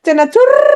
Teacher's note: কম্পিত হয়েছে, তাহলে র উচ্চারণের সময় তোমার কি হয়? জিভের আগা কিছুটা কম্পিত হয় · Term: কম্পনজাত ধ্বনি